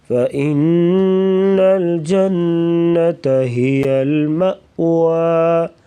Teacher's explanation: فَإِنَّ یہاں پر غنہ کریں گے، جنہ پہ بھی غنہ ہوگا۔